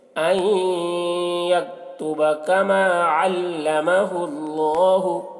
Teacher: اللہ کلام سے پہلے پیش ہے تو اللہ کلام کو پر پڑھیں گے